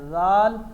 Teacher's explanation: آپ نے زیڈ کا وسلنگ ختم کرنا ہے اور آپ نے اس کو پڑھانا ہے ذال.